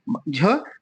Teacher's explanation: तालव्य भी है ये, झ महाप्राण भी है और घोष भी है